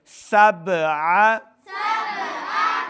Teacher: خلق اللہ سبع سبع سین کو با کے سامنے لانا ہے، با ساکن ہے، قلقلہ سے ہے تو اس کے اوپر قلقلہ ظاہر کریں گے۔ سبع عین کو صحیح تلفظ کے ساتھ پڑھنا ہے، حمزہ کی آواز نہیں آنی چاہیے